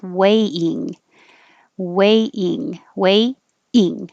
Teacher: when you say ing, ing, you're starting in the E position. So you push it up there and then just make a little break.